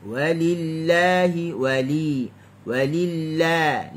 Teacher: Lam pada kalimah Allah dibaca dengan nipis. Walillahi, walillah, la nipis.